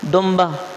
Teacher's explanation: نون کو ہم نے میم میں تبدیل کر دیا، لکھا جائے گا نون، پڑھا جائے گا میم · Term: اقلاب